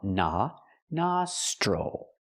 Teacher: the O makes the open a sound like hot and stop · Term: open ah sound